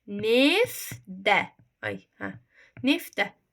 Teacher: Gördünüz, sait gəldi, t-d ilə əvəzləndi.